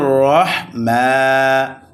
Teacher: হিররাহ হিররাহ র মোটা হবে মানির মান হির রাহমান মিমের উপরে কারা জবর আসার কারণে এক আলিফ টান হবে